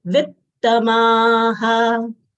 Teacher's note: After short V, there are 1.5 t's over here.